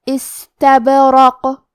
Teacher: استبرق، آخری میں حرف القاف ہے، قاف کی ادائیگی زبان کے جڑ اور تالوں کے نرم حصے سے ہے، قاف حروف التفخیم میں سے بھی ہے تو ہم یہ حرف کو موٹی آواز میں پڑھیں گے